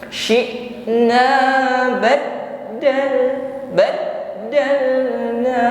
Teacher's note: Begitu pula dengan huruf dal yang bertasydid, sifatnya juga syiddah. Hurufnya tertahan ketika kita mengucapkannya.